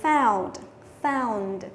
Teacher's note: Thì o u đọc là ao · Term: âm ao